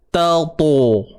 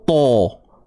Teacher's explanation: Kalau kita sebut to, muncung, dia akan jadi to, to. Dia bunyi terkumpul.